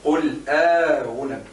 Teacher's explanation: إدخال ألف صغيرة خنجرية صغيرة بين المحققة الأولى والمسهلة الثانية · انت قلت أنبئكم تجي ونعرفوا الهمزتين هنا نقولوا تحقيق الأولى وتسهيل الثانية أي زيد مع إدخال ألف بين الهمزتين بين المحققة وبين المسهلة